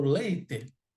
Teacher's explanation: Quando eu falo leite, minha boca, gente, leite. Quando eu falo leite, o timbre é fechado.